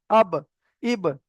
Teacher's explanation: দুই ঠোঁটের ভিজে অংশ মিলিত হয়ে উচ্চারিত হয়।